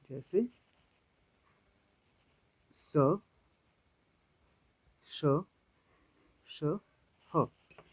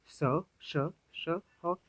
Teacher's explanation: वे व्यंजन जिनका उच्चारण करते समय वायु घर्षण के साथ या ऊष्मा के साथ बाहर निकलती है उसे संघर्षी व्यंजन या ऊष्म व्यंजन कहते हैं।